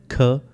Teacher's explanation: Vocal cords remain open. Vocal cords open रहेंगे voiceless sound के लिए।